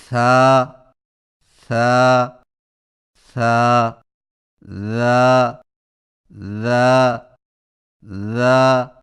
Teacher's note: ثا اور ذال کی ادائیگی میں زبان کی نوک کو سامنے والے اوپر کے دو دانتوں کے اندرونی کناروں سے نرمی سے لگا کر نرم اور بغیر سیٹی والی آواز میں پڑھیں، جیسے سا سا سا ذا ذا ذا.